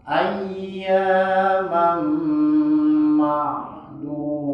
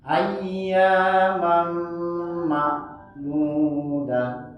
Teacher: Yang pertama tadi pakai ain, yang kedua dia pakai hamzah. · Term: makhrajul hurufnya